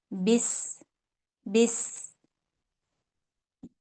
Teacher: اور جب اس کو ہم سین کے ساتھ ملائیں گے تو اس میں سیٹی کی آواز پیدا کریں گے، اور اس کی جو سیٹی ہوگی وہ بالکل باریک ہوگی، اور اس میں سانس بھی جاری رہنی چاہیے. جیسے بس بس، یہ والی ساؤنڈ آنی چاہیے.